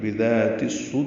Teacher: تا کو صدور کے صاد سے ملا دیں گے، یہ ادغام شمسی ہے، الف لام نہیں پڑھا جائے گا